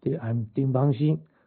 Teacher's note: oh, that's all first tones